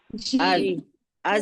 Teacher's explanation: क्योंकि देखिए ज जब अदा कर रहे हैं हम, अज जब कहते हैं तो हमारी जबान की नोक जो है वो पीछे लगती है चार दांतों के आगे, और नीचे वाला हिस्सा जाके जड़ में लगता है